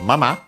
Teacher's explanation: In this case, not on its own, because after it we have mama, which is technically a noun, used more often than not as an adverb, accented on the last syllable technically, even though often you'll hear it on its own.